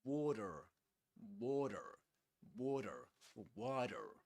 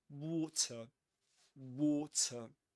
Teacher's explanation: A flap T. In water, we say this is a flap T, which means that it's pronounced just similar to a D sound.